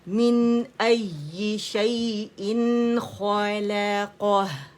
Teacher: یہاں پہ نون واضح تھا کیوں کیونکہ آگے ہمارے پاس تھروٹ کا لیٹر تھا تو یہاں ہم نے اظہار کیا کس کا نون کا اظہار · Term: اظہار حلقی